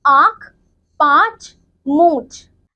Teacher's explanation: मुख व नाक दोनों से उच्चारित होने वाले वर्ण को अनुनासिक कहते हैं। अनुनासिक का चिन्ह चंद्र बिंदु है, जो कि हम इस प्रकार बनाते हैं, जैसे आंख, पांच, मूंछ।